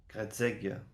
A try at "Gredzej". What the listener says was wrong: Gredzej. Il y a un J, ouais.